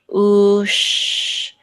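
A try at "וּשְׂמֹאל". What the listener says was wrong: That's Arabic. If you do shah here, it'll be an Arabic word. Small. You know not to pronounce the aleph here because there's no vowel associated with the aleph.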